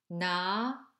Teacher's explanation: These sounds are alveolar sounds produced in gum roots.